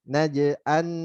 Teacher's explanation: Silakan baca 4 harokat ya, kita prakteknya 4 harokat. Terus n-nya nunnya terakhir tipiskan dan jelaskan.